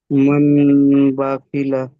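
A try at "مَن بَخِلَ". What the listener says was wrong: মান হবে না আমার সোনা ভাই ভাই মাম হবে মাম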